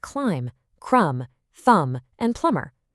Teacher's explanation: Your mouth doesn't actually make that buh sound at the end. It's thumb, not thumb-buh.